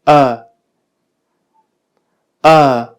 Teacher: Y más todavía la vocal que se encuentra exactamente en el centro de todo el sistema vocálico, que es esta vocal, porque podemos apreciar que se pronuncia con la boca con un grado de abertura de la boca intermedio, es decir, entre la posición de la boca completamente cerrada y la boca completamente abierta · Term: schwa